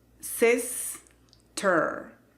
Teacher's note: Esta palabra tiene el acento en la primera sílaba y se pronuncia con ese sonido de como en it. Y simplemente se pronuncia sister.